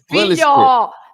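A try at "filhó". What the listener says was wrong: with an accent on the O. Different.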